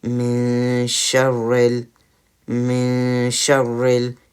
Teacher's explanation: instead of having a stronger nasal sound, which is the sound which comes from our nose with the gunna, we're having some more lighter one. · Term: ikfa